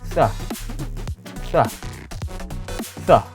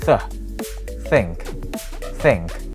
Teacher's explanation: bunyi sah dalam kata think itu adalah voiceless atau tidak bergetar di dalam tenggorokan kita.